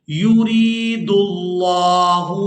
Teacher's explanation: را کو باریک ادا کرنا ہے اور اس کو یائے مدہ کے ساتھ ملاتے ہوئے کھینچ کر ادا کرنا ہے